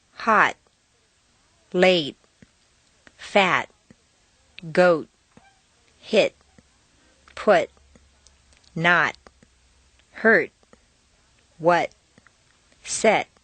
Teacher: T at the bottom of a staircase is in the held position